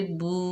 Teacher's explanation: बा के ऊपर पेश, वाव साकिना है, वाव मद्दा है, एक अलिफ की मिकदार खींच कर पढ़ेंगे